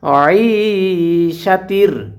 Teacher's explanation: কণ্ঠনালীর ঠিক মাঝখান থেকে আইন হরফটিকে উচ্চারণ করতে হয়